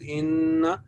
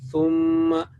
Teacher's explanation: extend 2 count a nasal sound here, which was missing here. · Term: gunna